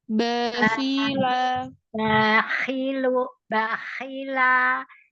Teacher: b pakai bibir Basah Bibir basah bagian dalam